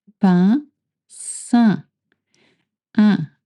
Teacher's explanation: Your mouth is stretched. E, make the sound E, and then from E, try to go to un. E, un. You just need to lift the back of your tongue.